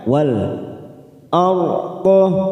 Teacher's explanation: Wal masuk ke dalam ta'rif al khamariyah. Wal arda, wal ra sukun yang didahului fathah kita baca tafkhim, kita baca tebal